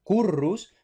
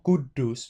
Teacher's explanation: lo que escribimos con dos Rs no es realmente una R, sino que o sea, son realmente dos Rs percusivas o una R percusiva geminada, ¿no? Entonces, pues, por ejemplo, esto a la española lo leemos currus, pero esto en latín se leería algo así como currus, ¿no?